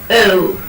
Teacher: O is a glide from the central unrounded vowel between half close and half open to oo, a back rounded vowel just above half close